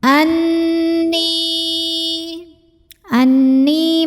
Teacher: Karena nun tasydid, maka cara bacanya dengung. Jadi ditahan bunyi N-nya kurang lebih 2 harokat sampai ada getaran halus ke hidung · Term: gunnah musyaddadah